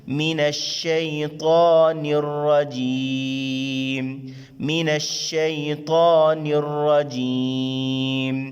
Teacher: را کے اوپر زبر کی صورت میں را کو بھی موٹا ادا کریں گے